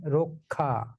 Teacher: কয় স। কয় স থাকার কারণে র এর সঙ্গে যে অ আছে, সেই অ ধ্বনিটি সংবৃত হয়ে ও হয়ে যাবে। এই জন্য উচ্চারিত হবে রক্ষা।